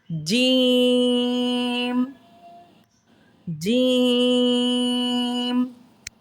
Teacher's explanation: It touches upper side of your mouth. When we recite it with a long vowel, we stretch it equal to 5 alifs.